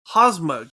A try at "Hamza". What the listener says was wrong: Hamza. Or Hamza. The M comes before the Z. You said Hazma. Hamza.